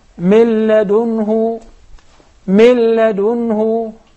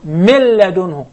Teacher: So if I would like to write it down according to the sound, I will drop the noon and I will write it lam right away. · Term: complete idgham